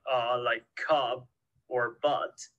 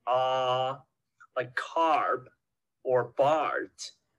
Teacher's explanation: for the short uh it's just barely open and pretty relaxed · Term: short ah